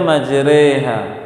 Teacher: Seperti majreha, tulisannya majroha, dibaca majreha. Fathah yang dimiringkan sedikit, imalah